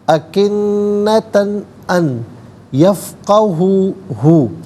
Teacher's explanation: انا جعلنا علی قلوبہم اکنتن میں تا پر تو زبر کی تنوین، اس کے بعد حرف حلقی حمزہ آ رہا ہے، تو یہاں پر اظہار کیا جائے گا، تنوین پر اخفا یا غنہ نہیں کریں گے۔ اکنتن ان یفقہوہ، ان میں نون ساکن ہے، اس کے بعد یا آ رہا ہے تو نون ساکن کو یا کے ساتھ ملا کر یا کی آواز کو غنّے کے ساتھ ادا کریں گے۔